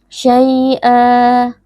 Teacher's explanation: kita ganti fathatain ini menjadi fathah, lalu kita baca panjang satu alif atau dua harokat. Ya, jadi tanwinnya diganti dengan alif. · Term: mad iwad